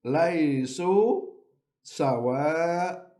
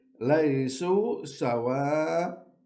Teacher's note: We remove one Fatha and we recite it as in the long vowel alif.